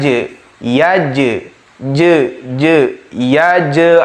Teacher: kedua alam yaj'al disana ada lafadz yaj gym adalah huruf Qalqalah ketika sukun maka kita bacakan atau pantulkan